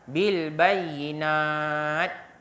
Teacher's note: mim sakinah bertemu dengan ba. Ya, ikhfa syafawi dengung sebanyak 2 harakat.